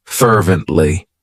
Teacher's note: it has three syllables and the stress is on that first syllable